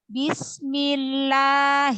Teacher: Bismillah itu hanya 2 harokat. 2 harokat itu 2 ketukan atau 1 kali ayunan suara. Jadi jangan terlalu panjang.